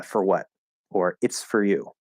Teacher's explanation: speaking more slowly it's probably going to come out as four if you're speaking normally or more quickly then it's much more likely to be reduced to fur · if I say for what or it's for you, fur is going to be the most common way to say it.